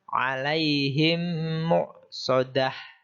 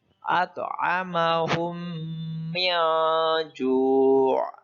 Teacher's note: Cara membaca idgham mimi yaitu dengan cara menyuarakan mim rangkap atau ditasjidkan dan wajib dibaca dengan dengung. Panjang bacaannya adalah 1,5 ketukan.